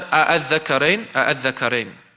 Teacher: They'll pronounce it like that. You hear both of the hamzas, but it is made lighter. It's made easier upon the tongue to pronounce it. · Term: tasheel